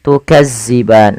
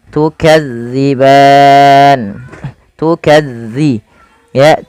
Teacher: jangan sampai terbaca dengan tukazziban dengan huruf z tapi dia dza